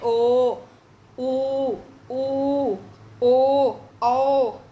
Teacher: ये जो उच्चारण हुए जीभ के पीछे के भाग से हुए हैं, इसलिए इसे बोलते हैं पश्च स्वर